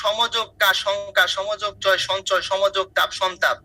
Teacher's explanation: এরপর যে কোনো বর্গীয় ধ্বনি থাকলে ম ধ্বনিটি সেই বর্গের কি হয়? নাসিক্য ধ্বনি হয়।